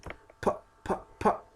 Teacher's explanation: tani waa voiceless marka lama isticmaalayo vibration ma jiro